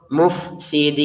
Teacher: Jangan kita baca muf mufe enggak ada e di sini enggak ada e langsung mufsidin